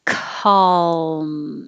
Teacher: i say my k in the back of my throat